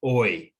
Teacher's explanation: a sound that starts at the back of the mouth and moves forward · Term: diphthongs